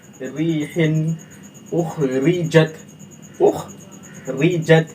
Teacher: जब कलमा के शुरू, बीच या आखिर में हरफ रा के नीचे जेर हो तो रा बारीक होती है। रा पर जेर हो तो बारीक पड़ जाती है, चाहे शुरू में हो, चाहे बीच में हो, चाहे आखिर में हो। जैसे रीहिन, इसको रीहिन नहीं करके पढ़ेंगे, आसान से तरीके से पढ़ेंगे, रीहिन, उखरिजत, उखरिजत, रा पे जेर है, तो यहाँ पर हम रा को क्या करेंगे, बारीक पढ़ेंगे।